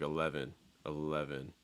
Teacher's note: the v sounds a little bit stronger in american english